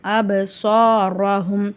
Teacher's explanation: ரஹும்ல ரா மேல ஜபர் இருக்கு ராவ நம்ம வல்லினமா ஓதணும்